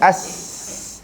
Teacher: Huruf sin huruf angin. Tapi dia bukan huruf putus. Sebab tu kita boleh buat lama.